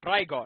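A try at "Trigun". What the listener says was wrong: Trigon, not Trigon, Trigon. G-U-N, not gone. Not G-O-N. G-U-N.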